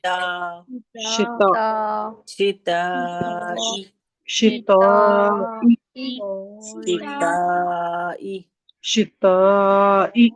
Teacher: تا تا بالکل باریک پڑھیں گے ہم اس کو بالکل موٹا نہیں کریں گے. شتاء تا تا سمپل زبان کی نوک کو سامنے کے اوپر کے دانتوں سے لگائیے